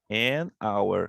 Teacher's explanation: Só que aqui o H nós não pronunciamos, ele é um H mudo.